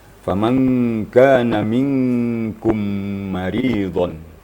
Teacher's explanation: kita temui mim sukun bertemu mim. Ini namanya idgham mimi